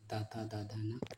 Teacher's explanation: ये दंत वर्णों में आते हैं